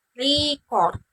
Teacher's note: Tekanan pada suku kata pertama sebagai kata benda yang berarti rekaman